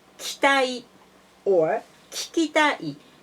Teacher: Please notice that the first ki in both words we can delete the vowel So we can say 期待 or 聞きたい We can delete the vowel I, but we have to keep the length of the time. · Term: vowel deletion